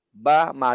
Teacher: Lihat bibir kita masing-masing pada saat menyebut ba dengan ma tidak ada perubahan formasi dari bibir dan lidah, sama semuanya.